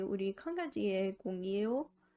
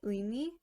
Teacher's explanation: the possessive particle isn't pronounced as 의, but 에. This only applies if the syllable falls in the middle or the end of the word.